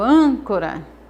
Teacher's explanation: Exemplo de palavras proparoxítonas. Âncora, a sílaba tônica é an.